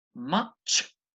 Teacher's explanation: you should feel a real pressure build up and release when you say that word